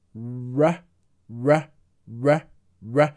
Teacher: In American English, then they prefer to say the r like this. R, r, r, r. So they use the lips.